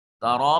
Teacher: تارا میں را کے اوپر زبر ہے، را مفتوح ہونے کی وجہ سے مفخم ادا ہوگا